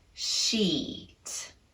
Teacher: bring up our tongue very high in the mouth, which includes making contact with the side molars. Keep it muscularly tense and lengthen the duration of the vowel. Sheet. We can apply those same three principles to the second word, beach.